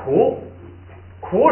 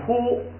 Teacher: 是一共你看几个字啊？前不降后不升6个字，都变高平调5个字，一共11个字，这是第1句。哎，记住这个之后呢，你就像刚才这个说这个K▁估那个哈，哎，第2音节出现一个卡，它是这个第3竖行的。第1它要变成高平调，你后不升嘛，变高平调。第2变成不松气，高平调本来是卡，高平调就变成咔，然后它又不松气，咔就变嘎，哎，就变成了那第1行的嘎，哎，所以呢，这是一个规则。所以刚才咱们读的那个就是K▁估。第一音节前不降，前边这个呢▁K▁是升调，不违反规则，不变，还是▁K。后边这个 本来是苦是2声往上升的，后不升，所以这个升调取消，变成平调 ，变成哭。然后呢，它还要送气，变成不送气，就哭不变哭了，就变成咕，不送气了。